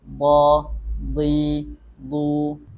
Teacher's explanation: sifat tambahan pada huruf dad ini yaknya adalah istitalah atau memanjang makhrajnya jadi makhrajnya itu memanjang D di du Coba kita praktikkan dengan